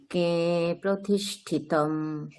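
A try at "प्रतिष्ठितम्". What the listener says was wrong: আপনার কিন্তু একটা মানে অকারের উচ্চারণটা কিন্তু মানে পুরোপুরি ঠিক হয়নি মানে একটা ওকারের একটা আভাস থাকছে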